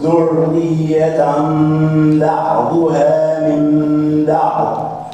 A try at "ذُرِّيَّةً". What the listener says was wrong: ذري، شوف الراء مرققة عند كل القراء.